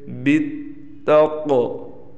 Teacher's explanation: قاف کو ہم نے موٹا بھی کیا اور قلقلہ بھی کیا